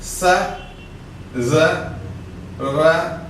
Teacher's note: For all these sounds, tip of the tongue touches the teeth ridge. So we say it is a alveolar sounds.